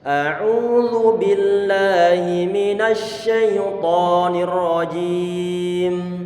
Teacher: jangan sampai kita ucapkan dengan kita monyongkan bibir, karena shin tidak dalam kondisi dhammah. Sehingga perhatikan bibir masing-masing, apakah kita mengucapkan begini shay.